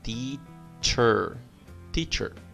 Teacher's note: Nota a pronúncia de T, com a ponta da língua nos dentes. T. E depois o ch, como em tchau.